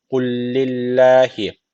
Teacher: Bir tane lam var gibi okuyoruz ve şeddil okuyoruz.